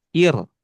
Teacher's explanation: Ro sukun itu kasroh maka sifatnya tarkik atau dibaca tipis.